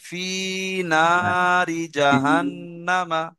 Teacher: জাহান নামা টান খ নেই, শুধু খাড়া ফি জবর খ, আর না এই দুটো টান আছে। ফি আর না এই দুটো টান আছে, বাকি টান নেই।